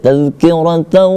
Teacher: Boleh juga itu karena hukum bacaannya di situ adalah ketika nun mati atau tanwin bertemu dengan huruf waw, huruf ya, waw, mim, nun, maka berlaku dia idgham bi gunna, maka dia dibaca dengung